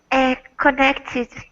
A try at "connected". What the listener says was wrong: That's it.